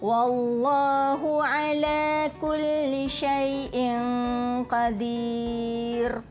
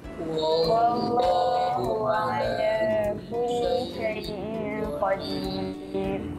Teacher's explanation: ra itu juga kita baca secara tarqiq. Nipis sahaja. Tak perlulah membulat-bulatkan mulut.